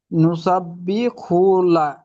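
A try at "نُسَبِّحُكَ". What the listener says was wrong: হুকা, নুসাব্বি হুকা, কাফ আছে লাস্টেরটা।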